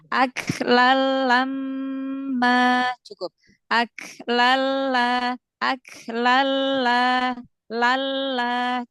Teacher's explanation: Tanwinnya tidak dibaca tapi langsung masuk ke huruf lam tanpa disertai dengung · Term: idgham bila gunnah